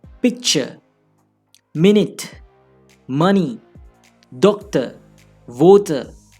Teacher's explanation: In such nouns, usually we stress the first syllable. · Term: syllable stress